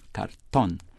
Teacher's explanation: The word thus imitates the Spanish stress on the last syllable.